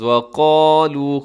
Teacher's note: قاف کو اپنے موٹا پڑھنا ہے، اسے باریک نہ ہونے دیجیے گا، لو کو لمبا کرنا ہے کیونکہ واو مدہ ہے۔ وَقَالُوا، آگے لَن يَدْخُلَ، یہاں نون ساکن کے بعد یا ہے تو یہاں ادغام ہوگا، کیسے پڑھیں گے؟